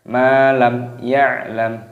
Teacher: Malam mimnya panjangkan matopi'i lam ya'lam mim sukun bertemu dengan ya izhar syafawi.